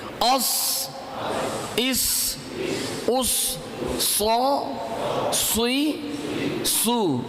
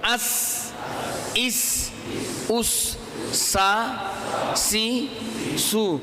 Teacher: صاد کو پر پڑھا جائے گا، پر پڑھیں گے تو صاد ادا ہوگا، باریک پڑھیں گے تو سین ادا ہوگا۔